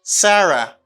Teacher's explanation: it's a falling intonation because you lower your voice